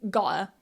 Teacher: when you use the glottal stop here and say gotta, it really sounds quite informal